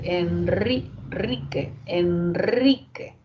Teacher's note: En Enrique, ante la N, se escribe también solo una vibrante, pero el sonido es múltiple.